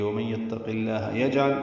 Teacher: قاف کو پر پڑھیں گے، لام اسم جرالہ کو باریک پڑھیں گے · جیم ساکن پہ قلقلہ ہے